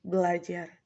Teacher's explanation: Mestinya, kalau tidak ada perubahan menjadi belajar. Tetapi karena ada dua bunyi R, maka R yang pertama dibedakan atau didissimilasikan menjadi L